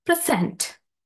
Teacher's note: As a verb, stress falls on the second syllable.